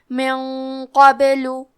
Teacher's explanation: حرف القاف کی ادائیگی زبان کے جڑ اور تالو کے نرم حصے سے ہے · اخفاء کا معنی ہے چھپا دینا تو ہم نون ساکن کو چھپاتے ہوئے اور غنہ کے ساتھ یہ حکم کو ادا کریں گے کیونکہ غنہ میں اگلے والے حرف کا حکم لینا ہے، تفخیم میں اور ترقیق میں، اور قاف حروف تفخیم میں سے ہے تو ہم یہ غنہ کو بھاری آواز میں ادا کریں گے.